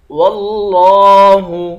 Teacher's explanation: لفظ اللہ کلام کو موٹا پڑھیں گے ، لفظ اللہ کلام کے اوپر کھڑا زبر ہے، اس کو